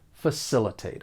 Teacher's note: For pronunciation, the verb has 4 syllables. The stress is on that second syllable.